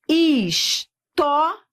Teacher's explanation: Eu vou da semivogal para vogal. Eu tenho aqui um ditongo crescente. Pronto, o recado que você vai anotar é que os ditongos crescentes, eles podem virar hiatos.